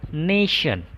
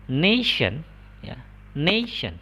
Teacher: Jadi di ne-nya kalian tinggikan. Berikutnya di shen-nya itu kalian turun volumenya, atau ya pokoknya nggak ditekankan lah ya, nggak ditekan gitu sih katanya.